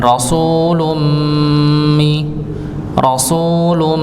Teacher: ada hukum tanwin bertemu dengan mim ng didengungkan